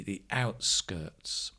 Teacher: the outskirts stress on the out